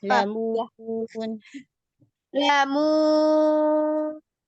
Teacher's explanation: Nah, lamun bersihkan dari gunnah.